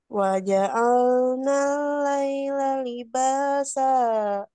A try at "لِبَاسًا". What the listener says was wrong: Cuman agak panjang, terlalu panjang. Cukup satu ayunan saja. Libasa. Kalau terlalu panjang pasti jadi ke situ ya. Libasa. Sedikit sentuhan ke mad.